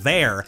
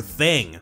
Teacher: with a voiced TH sound like in the word THERE, as opposed to the voiceless TH in the word THING.